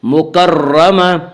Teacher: فی صحف مکرمہ، آگے آیت ہے وقف کریں گے، گول تا وقف کی صورت میں ہائے ساکنہ بن جاتی ہے،